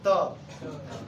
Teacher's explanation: त में दांत में पूर्ण स्पर्श होता है